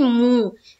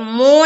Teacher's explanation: मीम पेश मू जो पढ़ते हैं वो मारूफ है, और अगर कोई पढ़ता है मीम पेश मो तो ये मजहूल है। हमें मजहूल नहीं पढ़ना है, हमें मारूफ पढ़ना है।